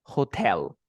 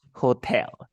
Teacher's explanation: La fuerza de voz es en tell. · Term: syllable stress